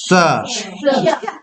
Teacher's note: हाँ भाई, तो दंत स जो है जीभ जाकर करके दांत को स्पर्श करके जब स का उच्चारण करता है, जैसे स बोलते हैं स, तो इसको हम लोग दंत स बोलते हैं। जीभ जो है दांत के पास जाकर के हवा पास कराता है, स ऐसा स सिस्कारी लेकर के बोलते हैं हम लोग दांत के पास से।